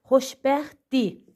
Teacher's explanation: qrammatik şəkilçi olduqda tələffüzdə r olmur. İstiyəsidir burada t da dyə keçibdir.